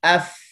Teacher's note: dia bersifat dengan rakhawah, ada suara mengalir